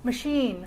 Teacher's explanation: I'm stressing this vowel, which is a pure sound, pure vowel, but the schwa is reduced